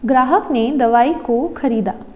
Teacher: we have Grahak, which has the L tone, which is the lowest tone, that is the pitch accent, followed by the H tone, which is the phrasal tone, the phrase tone. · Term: accentual phrase